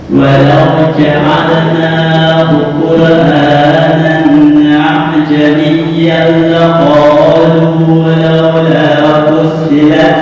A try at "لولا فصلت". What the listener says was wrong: Short itu itu jangan ditahan, bukan laula fussilat. Nah, itu kurang lepas. Laula fussilat ayat fussilat.